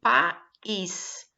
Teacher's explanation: Tanto A quanto I são vogais, ou seja, são separadas, tá? Então, ficam duas sílabas. E, portanto, é uma palavra que é um encontro vocálico, mas ele é hiato.